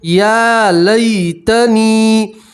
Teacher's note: یا لین میں کھینچنا نہیں ہے یا لین کو جلدی سے نرمی سے پڑھتے ہیں یا لین کسے کہتے ہیں کہ یا کے اوپر جزم ہو